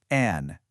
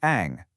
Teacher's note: And finally, we've got the nasal finals. These end with either an N or an eng sound, and you should really feel a vibration in your nose.